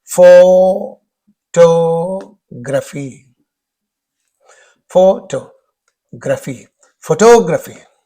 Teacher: Whenever it is photograph, then the stress is on the first syllable. When it is photography, then the stress is on the second syllable.